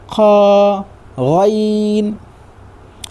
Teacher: ये दोनों हरूफ हलाक के ऊपर वाले हिस्से से अदा होता है।